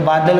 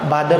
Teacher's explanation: ल का र हो जाएगा, तो बादल का बादर हो जाएगा। इसी प्रकार से ताला, ताला का ल का क्या हो जाएगा, र, तो ताला का क्या हो जाएगा, तारा।